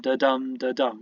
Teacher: We have an unstressed syllable followed by a stressed syllable, and we have 4 lots of those. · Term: iambic tetrameter